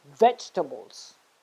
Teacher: you have to stress on the first syllable